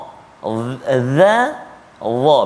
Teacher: Kemudian lepas tu kita jumpa juga huruf yang keluar di hujung lidah kan, tetapi dia sifat dia berbeza. Sifat dia tebal, dia terangkat lidah kita, dia isti'la kan. Iaitu huruf dha kan.